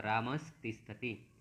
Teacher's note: इधर त है और इधर विसर्ग है, तो मिलकर क्या हो जाएगा, मिलकर ये दंती स में हो जाएगा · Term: सत्व संधि